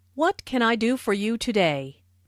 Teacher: Notice that this question starts with what, so the intonation drops at the end of the question.